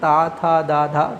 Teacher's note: ठीक है तो ये दंत व्यंजन इसलिए बोला जाता है क्योंकि जब हम लोग ता वाली लाइन बोलते हैं ना ता था द धा तो ये दांत से स्पर्श करता है